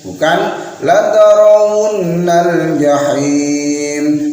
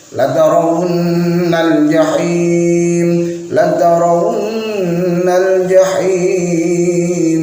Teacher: Hati-hati saat membaca nun bertasydid, harus ada dengung selama satu alif atau dua harakat.